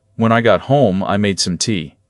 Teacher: Two natural little chunks with one small breath between them. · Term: thought groups